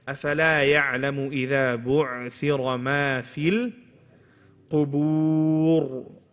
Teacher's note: on the word qubur, remember the ra is heavy. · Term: heavy ra